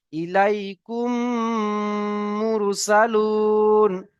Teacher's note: মিম সাকিনের পরে যদি মিম আসে, তাহলে মিমকে মিমের সাথে মিলিয়ে গুণনা সহ পড়তে হয়, একালিফ পরিমাণ গুণনা সহ পড়তে হয়। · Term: ঈদগামে সাফাবি